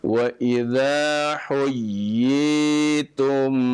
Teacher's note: ada tasydid dulu, kemudian baru dimadkan ya